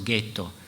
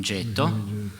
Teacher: pronuncia, ci sono alcuni che sostengono che probabilmente nel veneziano dell'epoca le palatali fossero realizzate come velari e quindi già i veneziani dicessero ghetto e non getto